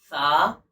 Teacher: जबान की नोक और ऊपर और नीचे के दांतो का किनारा मिलकर सा अदा होगा और हल्की सी हवा बाहर आएगी तब जाकर सा ये सही तरह से अदा होगा।